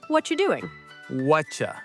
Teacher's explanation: In fast English, we rarely say you clearly. It often changes to ya or cha.